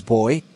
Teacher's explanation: flow of air out of the body is interrupted by closing the lips together